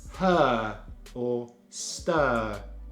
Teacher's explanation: jaw a little bit and make a much longer sound so we relax the mouth the tongue stays in the center of the mouth the lips are relaxed and just drop the jaw a little bit